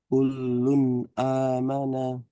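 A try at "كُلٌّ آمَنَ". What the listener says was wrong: Coba didatarkan nadanya. Kullun amana.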